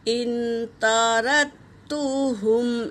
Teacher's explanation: وَيَا قَوْمِ مَنْ يَنْصُرُنِي مِنَ اللَّهِ إِنْ طَرَدتُّهُمْ، یہاں پر تا پر حرکت ہے، رو پر حرکت ہے، دال پر سکون ہے، اور تا پہ تشدید ہے، لیکن دال کو نہیں پڑھیں گے